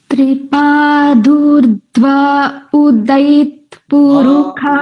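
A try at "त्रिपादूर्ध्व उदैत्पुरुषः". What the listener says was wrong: উদৈত এইরকম নয়, ধ্ব উদৈত মানে ধকারটাকে মনে হবে যে সেই ধাক্কা খেলো একটা, ধ্ব উদৈত এরকম, ঠিক আছে? গুম নয়, ওটা হ, পুরুখাহ।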